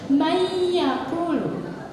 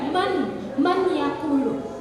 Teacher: Disertai guna atau dengung, ditahan sebanyak 2-3 harokat. Ya, kemudian apabila kasrah tain bertemu dengan ya, yauma idzi yasdurunna su'astatal liyurau a'malahu. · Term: idgham biguna